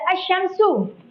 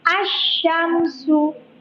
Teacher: Cara bacanya yang syamsiah itu huruf alif lamnya melebur atau tidak dibaca. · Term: alif lam syamsiyah